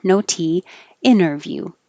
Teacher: the t is in the unstressed syllable so you don't have to say it